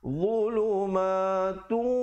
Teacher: Dhulumatu, di situ idgham bi gunnah, tanwin bertemu waw, jangan lupa dengungkan 2 harakat.